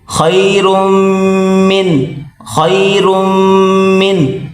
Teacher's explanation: را اور میم آپس میں ملائیں گے اور را کو موٹا کریں گے۔ اس کو را اور میم دبا کر پڑھیں گے سختی کے